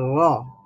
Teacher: জিহ্বার অগ্রভাগে কিছুটা ভাইব্রেশনের মতোই আপনার তাকরার শোনা যায় মানে শব্দটাকে ডবল শোনায়